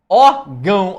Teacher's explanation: Ó como é que o a é mais forte que o o. Então você começou mais forte, que é o a e terminou mais fraco, que é o O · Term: ditongo decrescente